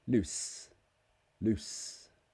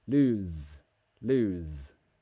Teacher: That is the S sound. It's an unvoiced sound.